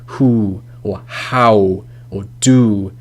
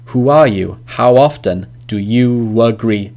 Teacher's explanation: round vowels your mouth is more round like who or how or do they're quite round